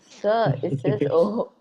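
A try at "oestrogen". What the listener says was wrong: No, O is silent. You know, English is funny language.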